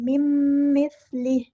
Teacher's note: नून की आवाज़ मीम की आवाज़ को मिक्स कर देना है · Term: इदग़ाम